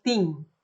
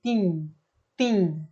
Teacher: En español no diríamos Timi, diríamos Tim, ¿sí? Solamente hablamos la M sin pronunciar la I